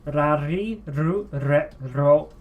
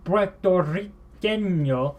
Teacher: As you can hear, ru, re, I'm trilling my R's. But when I try to do Puertorriqueño, you can hear my R just fell flat.